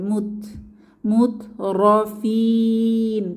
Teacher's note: তা এর উপরে সাকিন এসেছে একটু হামস বা বাতাস বের হবে মুত মুত রফিন তিন আলিফ টেনে ওয়াকফু করব মাদের হরফের পরের